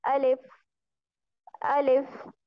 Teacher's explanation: الف میں ہم آ کو لمبا نہیں کرتے اور لام اور فا کو فوراً سے ملاتے ہیں